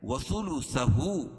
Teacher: الٹا پیش قائم مقام واو مدہ کے اس کو ایک الف کے برابر کھینچ کے پڑھیں گے